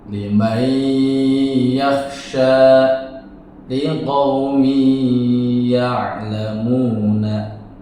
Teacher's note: Jadi apabila nun sukun atau tanwin berhadapan dengan huruf ya, maka suara nun sukun atau tanwin masuk pada huruf ya, dibaca dengan dengung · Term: idgham bi gunnah